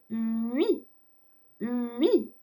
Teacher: you have your lips round tightly as if to say u, u, but then pronounce the e. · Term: semi-vowel